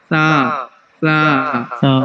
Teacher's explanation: سا سا زبان کی نوک اوپر والے دانتوں کی جو نوک ہے اس سے ٹچ کر کے نرمی سے ادا کرنا ہے، تیزی نہیں کرنی، نہیں تو سیٹی نکلے گی. سا جو ہے وہ نرم حروف ہے، اس میں سیٹی نہیں آنی · سا میں آپ کی سیٹی نکل رہی ہے. سا سا زبان کی نوک اوپر والے دانتوں کی جو نوک ہے اس سے ٹچ کر کے نرمی سے ادا کرنا ہے، تیزی نہیں کرنی، نہیں تو سیٹی نکلے گی.